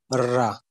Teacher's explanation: formed with the tongue near or touching the back of the alveolar ridge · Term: post alveolar